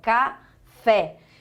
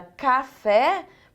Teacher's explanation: café tem um som Tônico e aberto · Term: som aberto